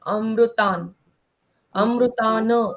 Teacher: ता के ऊपर जो अनुस्वार है उसको आधे न के जैसे पढ़ना है।